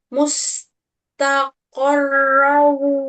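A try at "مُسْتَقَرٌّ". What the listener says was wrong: Mustaqorru. Mustaqorru. Nah, bukan row, tapi ru. Ru. Mustaqorru. Ya, ru.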